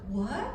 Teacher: That's the second tone of Chinese. It's a rising tone, all right?